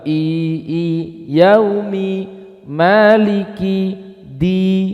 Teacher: betul-betul i bukan I yang tercampuri e Enggak boleh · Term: kasrah